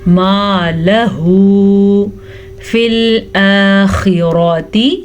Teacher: خا کو پر پڑھنا ہے اور را کو بھی پر پڑھنا ہے، را پہ زبر کی وجہ سے